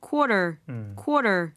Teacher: flap 사운드가 돼서 quarter 하지 않고 quarter, party, water 이런 발음과 동일하게 생각하시면 됩니다